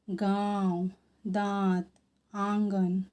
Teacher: इनका उच्चारण नाक और मुख दोनों से किया जाता है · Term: अनुनासिक